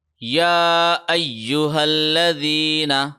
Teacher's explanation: یا کے اوپر یہ کھڑی زبر ہے، لہٰذا یا کو ہم 1 سیکنڈ لمبا کھینچیں گے۔